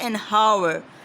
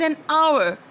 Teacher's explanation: So H becomes silent, though H is a consonant word